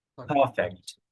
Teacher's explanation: আমরা এখানে আর এর উচ্চারণ করব না, কারণ আর এর উচ্চারণ মাঝখানে থাকলে আর এর উচ্চারণ হয় না